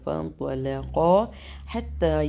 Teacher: Next آیت ہماری فانطلقا، یہاں پر بھی ہمارا ہوگا اخفا. طا بھی موٹا ہے، قاف کو موٹا کرتے ہوئے پڑھیں گے اور لام کو بیچ میں باریک پر فانطلقا حتی، یہاں پر مد منفصل، یہاں پر بھی مد منفصل اور ادھر بھی مد منفصل.